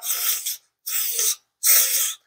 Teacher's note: What is happening in a lateral lisp is the tongue tip is stabilized and the edges are mobilized and the air is going laterally. Hence, it is called a lateral lisp.